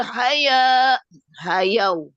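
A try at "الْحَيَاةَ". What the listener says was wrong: Ya, jangan hayau itu bukannya wau.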